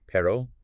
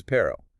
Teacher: the single R versus the rolled R